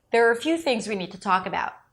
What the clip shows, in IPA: ðerər